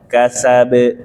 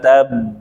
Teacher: Kekuatan pantulannya sama saja. Baik yang bertanda sukun maupun yang bertanda tasydid.